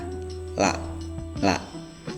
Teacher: udara keluarnya itu mutawasit di tengah-tengah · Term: lam